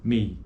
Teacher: É um ditongo decrescente por conta de que a acentuação, a proeminência acentual ocorre na vogal E, na primeira vogal. Então, mei é um ditongo decrescente.